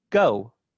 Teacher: in english go kind of ends with an off glide a labial